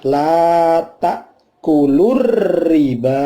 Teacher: Al ta'rif ketemu ro sehingga alnya al syamsiyah, sehingga tadi yang ta'kulu tidak menjadi panjang, langsung lur masuk ke dalam ro